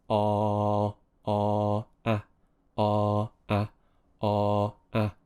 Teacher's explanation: wide my mouth isn't quite as open a a a a I'm using my throat more you can feel a bit more tension in the throat when you produce this sound the back of the tongue is pushing down a bit more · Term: the dentist sound